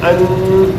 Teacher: یہ زبان ہے نا ہماری، جو یہ ہماری زبان ہے، یہ اوپر والے دانتوں کے پیچھے لگے گی، تھوڑی دیر کے لیے وہی لگی رہے گی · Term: تنوین